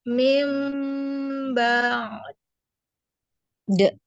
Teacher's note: di ainnya dialirkan dulu baru diqalqalah huruf dalnya